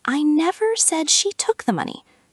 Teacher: Stress on took, maybe she borrowed it.